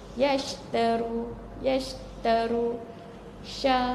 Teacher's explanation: hurufnya syin sahaja yasharu yaru S huruf syin sahaja yang berhamburan berhamburan angin di antara gigi depan dan langit keras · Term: at-tafashi